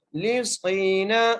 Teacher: صاد کو موٹا کر کے پڑھنا ہے، اور صاد کو ایک الف کی مقدار کھینچ کے پڑھنا ہے